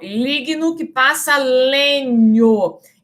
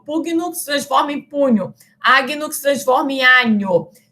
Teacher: G seguido do N, se transforma no fonema palatal NH. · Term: palatização